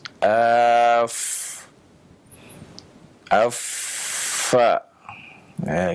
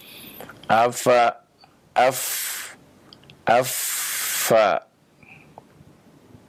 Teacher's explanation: Adapun yang pertama, makhraj yang pertama dari kedua bibir adalah yang berasal dari perut bibir bawah yang bertemu dengan ujung gigi seri atas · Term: huruf fa